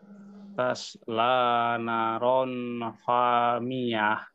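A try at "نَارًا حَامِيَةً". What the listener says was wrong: Hati-hati Pak, naknya di sini panjang ya. Udah benar hak Pak, bukan ho Pak.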